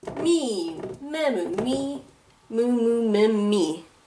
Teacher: and the object marker is e or wellness pronounced ed but if the previous thing was a vowel you will then add 2 m's so longer mm sound